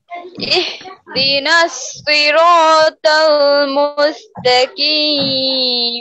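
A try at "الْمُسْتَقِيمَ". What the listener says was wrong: মুস্তাকিম জোরে নয় মুস্তাকিম মুস্তাকিম কেন হবে মুস্তাকিম খুব খেয়াল করেন কফ আছে মুস্তাকিম মুস্তাকিম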